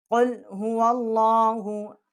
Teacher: یہ کھڑی زبر جو ہے ایک الف جتنا ہم اس کو کھینچیں گے